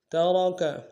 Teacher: مما ترک میں را کو موٹا ادا کریں گے